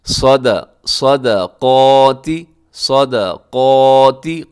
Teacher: صاد موٹا ہے، دال باریک ہے، اور قاف موٹا ہے، اس میں درمیان میں دال کو اپنے موٹا نہیں کر دینا، دال کو پتلا ہی رکھنا ہے، ٹھیک ہے جی۔